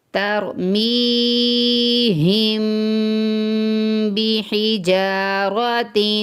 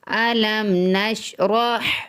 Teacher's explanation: ترمیہم کے اوپر غنہ اس لیے کیا کہ میم ساکن کے بعد با ہے